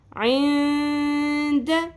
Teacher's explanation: تو ہم چھپائیں گے بھی آواز کو اور ناک میں کھینچیں گے بھی. اخفا مع الغنہ.